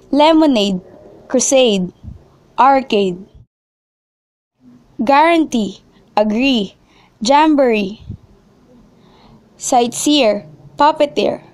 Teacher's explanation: Words that use the suffix ade, ee, ese, eer, que, ette, or oon have the primary stress actually placed on the suffix.